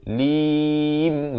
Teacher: ditutup rapat mulut pada huruf mim di hujung. Lim gitu, bukan alim.